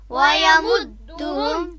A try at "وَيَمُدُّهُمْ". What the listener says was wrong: وَيَمُدُّهُمْ عام طور پر یعنی اس پیش کو جو ہے وہ مجہول انداز میں پڑھا جاتا ہے. وَيَمُدُّهُمْ یہ غلط ہے، ٹھیک ہے. وَيَمُدُّهُمْ نہیں پڑھا جائے گا بلکہ وَيَمُدُّهُمْ